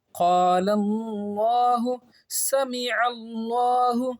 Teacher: لفظ اللہ سے پہلے زبر یا پیش تو لفظ اللہ کے لام کو پر پڑھیں گے، یعنی منہ گول کر کے پڑھیں گے